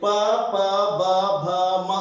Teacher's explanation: ತುಟಿ ಒಂದಕ್ಕೊಂದು ಹೊಡ್ಕೊಂತಾವ. ಆದ್ದರಿಂದ ತುಟಿಗಳ ಸಹಾಯದಿಂದ ಇದು ಜನಿಸ್ತಾವ. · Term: ಓಷ್ಠ ವರ್ಣಗಳು